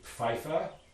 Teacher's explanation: begins with a labiodental affricate which isn't a sound in english and that's going to be loaded in as just a fricative